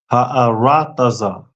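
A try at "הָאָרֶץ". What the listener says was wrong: All right, excellent.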